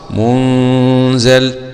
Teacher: أسكن النون وخفف الزاي غير الشامي وحفص